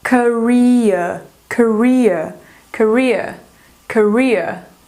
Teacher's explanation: Mas no britânico, como eles não pronunciam o R, ficaria aquele ditongo que é que é aquele I com o schwa.